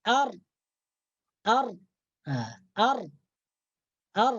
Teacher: ujung lidah kita itu menyentuh gusi atas mendekati makhraj huruf nun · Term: huruf RO